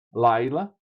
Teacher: Veja que o acento fica atrasado, é um masculino.